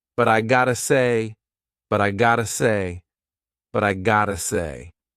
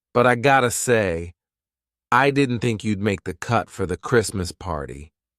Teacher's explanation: Pay attention to the two T's in gotta. They are not true T's. They are fast D's.